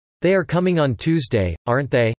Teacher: Tag questions asking for information are said to carry rising tones